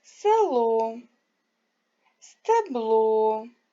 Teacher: не наголошений звук е вимовляють наближену до и